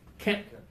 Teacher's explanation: a little stronger a little puff at the end